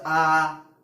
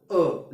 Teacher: जसं आ आपण म्हणतो, स्वर दीर्घ होतो. अ लगेच संपतो, वेळ कमी लागतो.